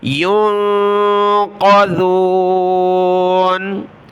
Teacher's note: وَلَا هُمْ يُنقَذُونَ قاف موٹا ذال باریک